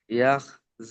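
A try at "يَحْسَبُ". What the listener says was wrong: ইয়াহ নেই, ওখানে ওটা হচ্ছে হা আছে, ইয়া হা জবর ইয়াহ, ইয়াহসাবু।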